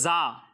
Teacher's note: جب آپ زا کی ادائیگی کریں گے تو اس میں سیٹی کی آواز نکلے گی